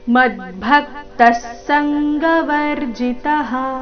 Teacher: ಮದ್ಭಕ್ತ ಶಬ್ದದ ನಂತರ ವಿಸರ್ಗದ ಅರ್ಧ ಸ, ಮುಂದಿನ ಶಬ್ದದಲ್ಲಿನ ಸಂಗ ಒಟ್ಟಿಗೆ ಹೇಳಬೇಕು.